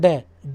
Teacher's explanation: ठीक है, जीभ के ऊपरला भाग जो होता है ना मूर्धा, उससे जब टकराती है जीभ और एकदम नीचे आती है बोलने में, जब आप बोलेंगे ड बोलेंगे तो जीभ ऊपर जाएगी, टकराएगी, है ना, मूर्धा से, और एकदम नीचे आएगी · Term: उच्चिप्त वर्ण